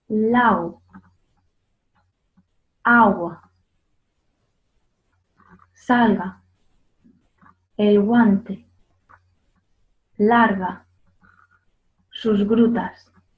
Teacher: Bien, lo importante en este sonido y la diferencia con el sonido g es que, como decía al inicio, la parte de atrás de la lengua nunca toca con el velo del paladar. Por eso el aire siempre puede pasar · la parte de atrás de la lengua sube hacia el velo del paladar, pero no llega a tocarlo. Por lo tanto, el aire puede pasar continuamente por esa zona.